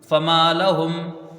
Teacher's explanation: فا کو جلدی پڑھا جائے گا، میم کو ایک الف کی مقدار کھینچ کے پڑھیں گے. لام کو جلدی پڑھیں گے، ہا کو میم سے ملا کے یہاں جلدی پڑھیں گے. یہاں وقف بالسکون ہوگا.